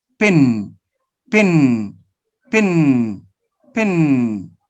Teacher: i can notice that i make a little change and i'm changing from oral to nasal why because the next sound the sun n is nasal so